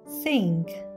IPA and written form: sɪŋk (sink)